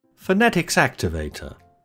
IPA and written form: fə.ˈne.tɪks ˈæk.tɪ.veɪ.tə (Phonetics Activator)